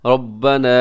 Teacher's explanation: ربنا اس کے میں را جو ہے موٹا پڑے گا اور اس کے اوپر مد بھی کیجیے گا